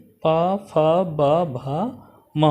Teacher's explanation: पा वर्ग का उच्चारण स्थान ओष्ठ से होता है। इनमें पा, फा, बा, भा, मा वर्ण आते हैं।